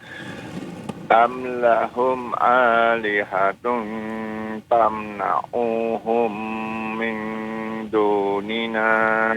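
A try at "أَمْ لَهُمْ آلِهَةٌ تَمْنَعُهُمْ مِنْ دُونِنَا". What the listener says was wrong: Tadi hanya sedikit saja tadi ainnya tamnauhum tidak dipanjangkan.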